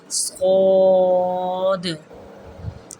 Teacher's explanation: آواز کو ذرا پیچھے لے جانا ہے اور موٹا کر کے پڑھنا ہے